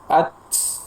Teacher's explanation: Kata pensyarah, ketika seseorang oper dalam memberikan huruf hamas di huruf ta, ya, seakan-akan ada tambahan huruf sin seperti at. Ada bunyi desis ya, sofir ya